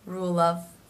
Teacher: So you will not hear a strong V sound, but more of a quick FV mix.